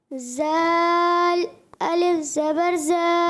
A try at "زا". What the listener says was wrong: یہ زال نہیں, یہ ہے زا. یہ ہے سیٹی والا.